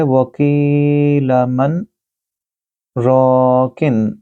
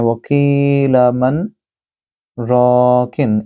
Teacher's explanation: میں نے یہاں وقف کیا لیکن سانس نہیں تبدیل کیا، دوسرا سانس نہیں لیا، ایک ہی سانس کے اندر وقفہ کرنے کے بعد میں نے پڑھا ہے، تو سکتہ میں ہم اس طرح پڑھتے ہیں وکیل من راکن، ایک ہی سانس کے ساتھ۔